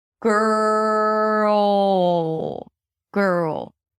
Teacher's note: The R is long and right before the L there is a transitional sound. Girl, it's a very muffled kind like dark sound. · You have to stretch the R and then get to that transitional vowel and then bring the L sound. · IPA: ɡɜːrl